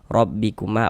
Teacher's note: Huruf ro memiliki harakat fathah maka huruf ro dibaca tabkhim dibaca tebal sehingga dengan menaikkan pangkal lidah kita ketika kita mengucapkannya.